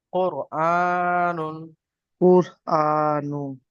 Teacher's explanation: নুনের উপরে পেশ এসছে, পেশটি হলো হারাকাত, হারাকাতকে তাড়াতাড়ি পড়তে হবে, টান দেওয়া নিষেধ। · র সাকিনের ডান দিকে পেশ এসছে, তাই রকে পুর করে পড়তে হবে।